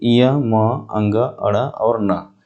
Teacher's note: ये सब नासिका से भी बोले जाते हैं और अपने अपने वर्गों के उच्चारण स्थान के साथ भी बोले जाते हैं